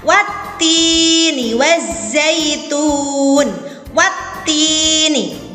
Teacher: Jadi alif lam dimasukkan ke huruf ta menjadi wattini, dimasukkan ke huruf ta. Di situ biasanya cirinya ada tasjid pada huruf setelah alif lam. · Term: asyamsiyah